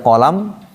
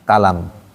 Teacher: Kalau orang Afrika itu dia qo dibaca ka